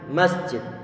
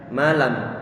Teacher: Ada getaran di hidung kita. Inilah gunnah ataupun dengungan yang tidak mungkin dihilangkan dari huruf nun ataupun mim.